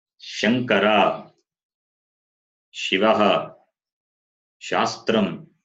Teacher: The sound comes from the palate. Therefore, it is palatal.